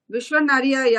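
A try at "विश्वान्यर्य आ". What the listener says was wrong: হ্যাঁ ওইখানে যে ইয়কারটা, ওই ইয়কারটাকে কিন্তু আমরা যে সম্প্রদায়ে পড়েছি সেখানে নিয়র জ আ বলা হয়, নিয়র ইয়া আ বলা হয় না, কিন্তু আমি নিয়র ইয়া আই পড়িয়েছি। অ্যাকচুয়ালি ওটা ভাবা উচিত নিয়র জ আ, ঠিক আছে?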